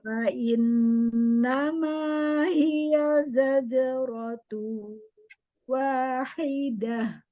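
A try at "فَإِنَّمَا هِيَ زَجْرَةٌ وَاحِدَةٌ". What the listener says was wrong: Nah, Umi membacanya jimnya jadi zazero. Nah, zaje. Zaje, coba. Ya, zajero. Iya, zajero lagi.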